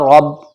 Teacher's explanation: را کے اوپر زبر ہے، را موٹا پڑھا جائے گا